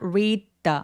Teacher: 그래서 read the더가 아니라 read the 하면서요 첫 번째 D가 디귿 받침처럼 표현해 주시면 돼요.